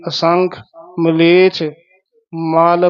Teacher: ਮਲੇਛ ਛੇ ਦੇ ਨਾਲ ਛਾ ਨਾ ਬੋਲਿਆ ਜਾਵੇ ਤੇ ਅਸੰਖ ਮਲੇਛ ਮਲ ਪੋਲਾ ਬੋਲਣਾ ਕਿਤੇ ਮਲ ਨਾ ਬੋਲਿਆ ਜਾਵੇ